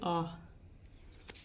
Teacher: विवर्त स्वर, विवर्त का शाब्दिक अर्थ है खुलना होता है, अर्थात जिस स्वर का उच्चारण करते समय मुख पूर्ण रूप से खुल जाता है